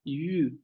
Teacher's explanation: Nosotros lo podemos describir y sabemos que es la central cerrada labializada.